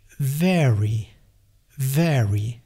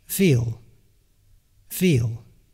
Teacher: our V has a little bit less voice. And therefore our V is just a bit more in the direction of the F, which is completely voiceless.